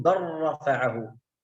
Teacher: أين اللام؟ تحذف لأنها إدغام، إدغام كامل